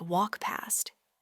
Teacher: The K and T sounds at the end of walked can often be significantly reduced. And the T in particular might almost disappear, especially before the P sound in past. It might sound more like walk past.